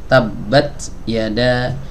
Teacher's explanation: huruf Ta ini ketika dalam keadaan sukun dia dibanyakkan hamusnya